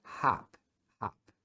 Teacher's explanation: É um A abrindo assim, ó. Então, eles fazem um som do O, mas abrindo a boca como se fosse falar um A. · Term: som curto